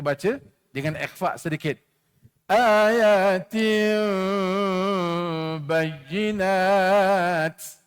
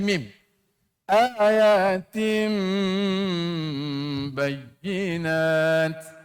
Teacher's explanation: iqlab bila kata iqlab ditukarkan tanwin tu kepada mim